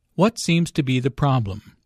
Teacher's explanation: Notice that the intonation falls at the end of the question. The doctor wants information, not a yes-no answer.